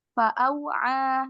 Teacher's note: huruf waw di sini sifatnya rokhawah, mengalir. Jadi jangan buru-buru.